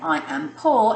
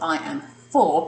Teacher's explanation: They might say I am poor instead of I am for, because they've used a p sound, they've used a stop sound instead of a flowy sound.